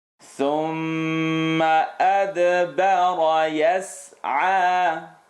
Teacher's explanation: Light all the way through except the ra.